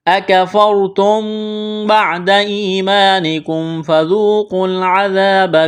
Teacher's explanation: ہے، یہاں الف مدہ ہے، ایک الف کے برابر کھینچنا ہے، میم ساکن کے بعد فا ہے، یہاں پر اظہار کریں گے ، فَذُوقُوا الْعَذَابَ، ذال کو نرم کرنا ہے، واو مدہ ہے،